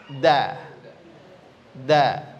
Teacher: ujung lidah ditempelkan ke tempat pertama tumbuh gigi seri atas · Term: huruf dal